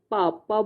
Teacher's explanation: प बोलते ही हमारे दोनों होंठ एक दूसरे को छूते हैं, है ना, तो होठ से है। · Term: ओष्ठ